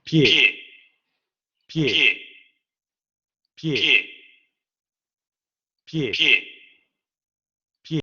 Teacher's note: Y aquí pronuncian pie, pie, pie, porque no se forman los diptongos, sino que tenemos compuestos entre la semiconsonante y la vocal.